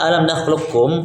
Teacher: semua sifat qaf diidghamkan ke huruf kaf tanpa tersisa. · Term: idgham kamil